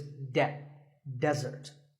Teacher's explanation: the stress is on the first syllable, which is de